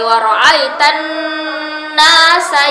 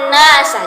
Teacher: Jadi harus ditekan, ditahan sementara ya, sebelum kita berpindah ke huruf sin. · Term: Tasdid nun